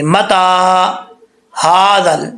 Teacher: تا کے اوپر کھڑا زبر ہے تو ایک الف کی مقدار اس کو لمبا کریں گے